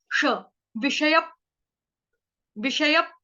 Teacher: मूर्धन्य वाला, षटकोण वाला श